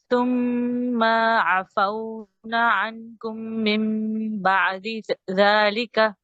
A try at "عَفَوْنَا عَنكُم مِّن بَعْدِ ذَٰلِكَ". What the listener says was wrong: نون کے بعد الف ہے، یہ ڈراپ ہوا ہے.